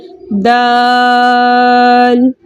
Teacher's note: دال بڑی مد کے ساتھ آیا ہے، اس لیے ہم اس کو 5 حرکت کی مقدار کھینچ کر پڑھیں گے